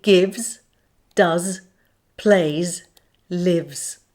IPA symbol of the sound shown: z